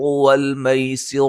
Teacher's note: سین کو باریک سیٹی سے اور را کو موٹا ادا کریں گے